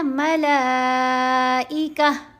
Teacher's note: ہ کی آواز آئے گی اینڈ پر، تا کی آواز نہیں آنی